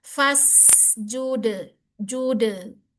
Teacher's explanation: dalnya ini kolkolah di dipantulkan, tapi pantulannya tipis. Wa minal laili fasjud lahu, hu dia punya sifat apa?